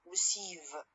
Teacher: i stress the last part or the last syllable of this word